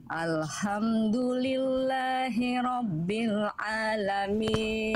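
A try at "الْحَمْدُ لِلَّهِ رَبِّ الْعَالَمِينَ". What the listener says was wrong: H kecilnya jangan sampai mirip-mirip ke kho. Nah, berarti itu Bunda bablas udah ke apa tuh namanya? Ke tenggorokan paling atas. Al-kha enggak. Al-ha tepat dari bagian tengah tenggorokan, nafasnya berbisik.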